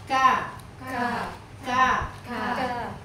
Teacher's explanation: enggak boleh kebanyakan nafasnya sedikit aja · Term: huruf Kaf